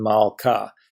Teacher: mates a really is the primary feminine singular noun ending so it is a long ah but the hay is not closing the syllable it's a materiality onus as well so it's open and long